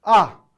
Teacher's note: 기본적으로 자음은 모두 다 일성이에요. 일성은 폴링톤이었죠. 위에서 아래로 떨어지는 소리입니다.